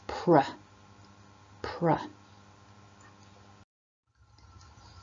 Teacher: for me the bottom lip curls out a little and my tongue curls in and upwards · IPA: /pr/